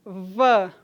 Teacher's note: o lábio inferior toca nos dentes incisivos superiores não é E aí há uma fricção na passagem desse ar V né É vozeado também é uniforme em todos os dialetos · que assim como o f, é fricativo e lábio dental. Observem, v, o lábio inferior, toca nos dentes incisivos superiores, não é?